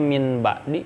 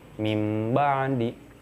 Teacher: Karena di sini kasusnya adalah nun sukun, maka nun sukunnya ditukarkan. Ditukarkan dengan apa? Dengan mim. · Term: iqlab